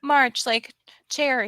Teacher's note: One thing is that you're saying marsh and not march, and that's a different word in English. That's a ch sound.